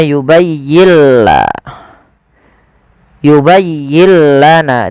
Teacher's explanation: Idghamnya adalah nun sukunnya diidghamkan ke huruf lam. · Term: idgham bila gunnah